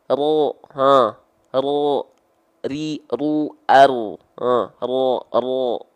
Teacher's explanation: jadi si ujung lidahnya itu dia enggak betul-betul nempel